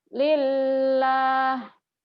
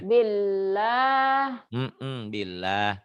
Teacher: Sebelumnya atau sebelum lapad Allah baris di atas patah atau doma itu tebel. Kalau sebelum lapad Allah baris di bawah berarti tipis atau tarki.